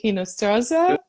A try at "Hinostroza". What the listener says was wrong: Pronounce the H at the beginning, so it's Hinostroza.